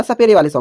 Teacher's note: जीभ की नोक आगे वाले दांतों के पीछे वाले हिस्से को छूती है वहां तक आ जाती है।